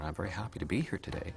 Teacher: Canadian has a very gentle drifting up pattern